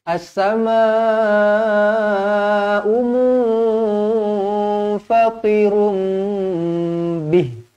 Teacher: as-samaa, empat atau lima harakat